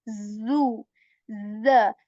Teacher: So again, this letter, you're very familiar with this sound, z, just like you say zoo in English, zoo, z. There is this buzzing sound, there is this vibration you feel